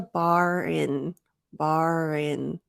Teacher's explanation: because I pause there for effect there is a little bit less linking